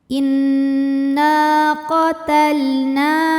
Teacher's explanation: Cara bacanya huruf nun ini panjang 2 harokat kalau berhenti. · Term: matobi'i